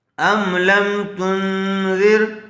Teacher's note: نون ساکن کے بعد حروف اخفا میں سے ذال آئی ہوئی ہے، اس لیے غنے کے ساتھ اخفا کر کے پڑھیں گے